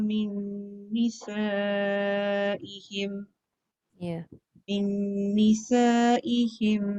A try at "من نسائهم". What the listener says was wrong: Panjang lagi, nisa tu tak cukup panjang.